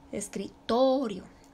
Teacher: No se le pone tilde, no se le pone acento, pero ahí recae la sílaba tónica, en la sílaba to. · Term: acento prosódico